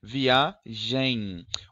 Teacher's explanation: na palavra viagem você tem um levíssimo som de in no final. E na palavra cantam você tem um leve som de no final. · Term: semivogal